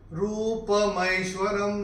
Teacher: र प बड़ी ऊ की मात्रा है तो रू को थोड़ा सा खींच